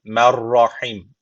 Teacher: gunnesiz bir şekilde bağlıyoruz yani şu ra harfi şeddeli okunuyor Mer Rahim Rahim son harf cezimli oluyor öyle o şekilde duruyoruz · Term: idham bila gunne